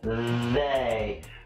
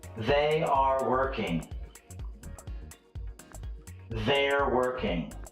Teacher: the th sound with a vibration in your throat